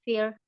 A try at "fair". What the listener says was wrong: it's fair fair you can say it's not Fe fair